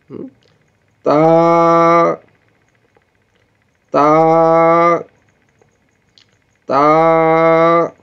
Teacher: زبان کی نوک اوپر دانتوں کی جڑ سے نکلے گی. یہ زبان کی یہ نوک ہے نا، یہ اوپر کے دانتوں ان کی جڑ سے جا کے یہ نکلے گی.